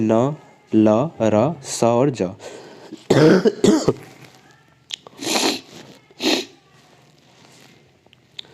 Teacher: इनके उच्चारण में दांतों का अंदर का मसूड़ा छू जाता है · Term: वत्सर